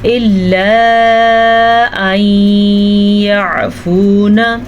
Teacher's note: مد کو خوب کھینچ کر کے پڑھیں کیونکہ یہ مد تقریباً 2.5 حرکات عربیہ کے برابر ہے